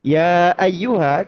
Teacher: ada bunyi panjang yang bertemu dengan hamzah